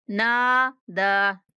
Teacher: नून और दाल दोनों को 1-1 अलिफ के बराबर खींच कर पढ़ेंगे।